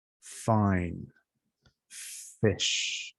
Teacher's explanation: upper front teeth pressing a little bit the lower lip you let the air pass that's an f fine fish with a v you need to make a vibration